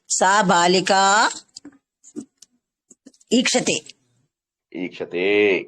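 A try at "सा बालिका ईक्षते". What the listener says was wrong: కొద్దిగా మంచిగా దీర్ఘం తీసి చెప్పండి చక్కగా. సా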